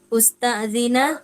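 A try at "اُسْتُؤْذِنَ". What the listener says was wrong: Bukan usta'zina. Majhulnya ustu, ya. Duma kullu mutaharrikin. Ustu zina yusta'zanu.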